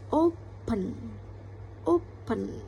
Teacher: Jadi menurut saya jadi penekanan katanya itu ada di open. O ya, ada di O-nya.